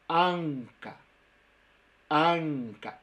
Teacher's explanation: es una N que la lengua está muy, muy atrás. Pero no tan atrás como una ñ.